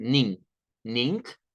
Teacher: no se usa el sonido ng sino que basta con usar el sonido de una n